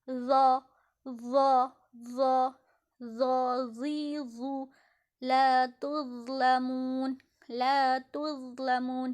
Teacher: Padahal di sini zo, zi, zu, zo, zi, zu. Nah, jadi ujung lidah kita agak sedikit ditekan atau agak sedikit digigit dengan dua gigi depan kita, dan kita longgarkan di bagian mulut kita